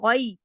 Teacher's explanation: دیکھیے تشدید ہے، سختی سے جوڑ کے پڑھیں گے، یؤمنون بالغیبی، اب اس میں دیکھیے جو غین ہے اسے موٹا پڑھا جائے گا